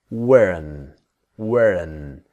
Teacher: But of course, the T is silent. Now this is the N sound, the strong N, the WEREN.